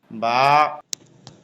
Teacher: স্বাভাবিক অবস্থায় মুখ যেমন ঠোঁট দুইটা মিলে থাকে, মেলানো ঠোঁট খুলে দিলেই হয়ে যায়।